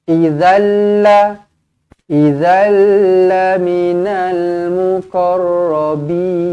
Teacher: Bin mad arid lis sukun. Baca dengan 2 boleh, 4 harakat pun boleh, 6 harakat pun boleh